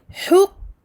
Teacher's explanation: je suis sur le point de sortie du qaf, donc au fin fond de la langue, et je bloque. Je bloque le son ici.